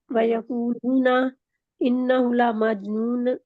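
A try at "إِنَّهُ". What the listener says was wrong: हु को लंबा नहीं वैसे करना, लेकिन ये गौर से पढ़ना है।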